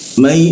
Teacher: nun mati bertemu ya itu ya-nya ditahan ya.